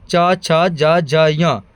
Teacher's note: तो च वर्ग निकलता है तालु से